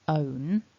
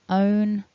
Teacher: The basic form ends in a N sound, so own, and we want that to be happening up in the nose.